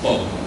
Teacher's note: in younger speakers of Philippine Hokkien, there's a merger of the two O sounds.